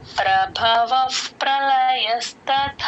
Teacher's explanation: ప ముందు ఎప్పుడు విసర్గ వచ్చిన ఎఫ్ సౌండ్ చెప్తాం